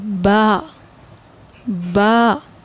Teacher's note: دیکھیں پڑھتے وقت دونوں ہونٹوں کا جو گیلا حصہ ہے وہ مل رہا ہے